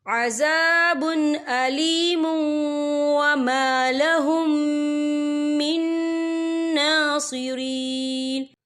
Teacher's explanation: لہم عذاب علیم وما لہم من ناصرین، یہ دیکھیں وما لہم، یہاں میم ساکن ہے، میم ساکن کے بعد جو ہے میم مشدد والا حروف آ رہا ہے تو یہاں پر ادغام شفی ہوگا، ہم پچھلے میم کو اگلے میم میں مدغم کریں گے اور ہم یہاں غنہ بھی کریں گے۔